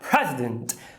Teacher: O primeiro E não é um schwa, porque está em posição tônica, né?